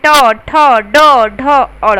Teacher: ट बोलिए तो आपकी जीभ ऊपर से टकरा कर आ रही है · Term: मूर्धन्य व्यंजन